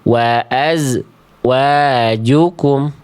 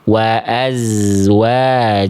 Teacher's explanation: Contoh lagi ya di sini enggak boleh dibaca wa azwajukum tapi wa azwajukum. Jadi dia mengalir terus desisan suara dan nafas